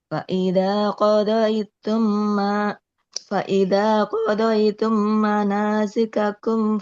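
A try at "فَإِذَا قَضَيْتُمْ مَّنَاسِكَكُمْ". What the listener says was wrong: Lebih lama ditahannya, jangan terlalu cepat.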